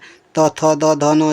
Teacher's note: जितने बार बोलेंगे आप उतने बार आपकी जीभ दांतों से टकराएगी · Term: दंत व्यंजन